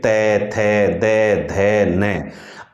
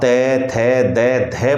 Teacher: आप त थ द ध बोलते हैं तो आपकी जीभ दांतों को स्पर्श कर रही है